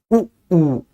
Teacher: छोटे ऊ और बड़े ऊ को बोलने में मुंह गोल तो होता है लेकिन ना के बराबर खुलता है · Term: छोटा उ और बड़ा ऊ